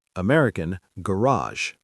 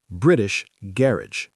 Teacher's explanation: The stress is on the first syllable in British English